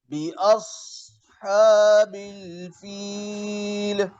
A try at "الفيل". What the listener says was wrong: فيل آخر में हिलाए नहीं. فيل. ألم تر كيف فعل ربك بأصحاب الفيل؟ فيل.